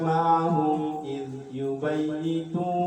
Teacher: Karena ada mim sukun bertemu dengan hamzah. Cara bacanya Jelas. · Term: idhar syafawi